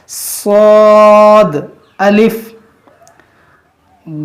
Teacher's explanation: اس میں ہمیں سختی کرنا ہے اور اس کو موٹا بھی کرنا ہے، یہ زبان کی نوک اور دونوں دانتوں کے اندرونی کنارے سے۔